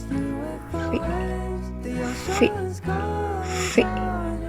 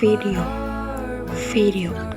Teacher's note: Cara pembentukannya bibir bawah menyentuh gigi atas tapi pita suara bergetar. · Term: huruf V